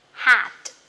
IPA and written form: hæt (hat)